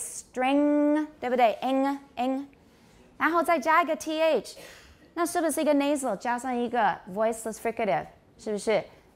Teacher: lot of native speakers pronounce this strength but i don't because that's an ng as far as i'm concerned it really should be velar